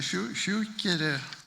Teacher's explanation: And in Munster, they say Shukire, which has 3 syllables